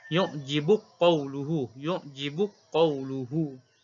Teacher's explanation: kalimah yu'jibuka qawluhu. Susi baca dengan idgham.